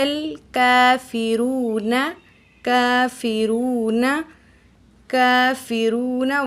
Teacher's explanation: واو ساکن اس سے پہلے پیش ہے، تو یہ واو مدہ ہے، 1 الف کے برابر کھینچ کے پڑھیں گے